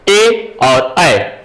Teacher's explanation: कंठ और तालु दोनों से बोला जाता है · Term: कंठ तालव्य